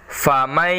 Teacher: nun sukun masuk ke dalam huruf ya jadi suara n-nya hilang melebur ya masuk ke dalam huruf ya faman ya jadi berubah famai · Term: Idgham Bighunnah